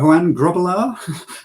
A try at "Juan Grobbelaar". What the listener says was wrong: Need to roll the R. Then it will work.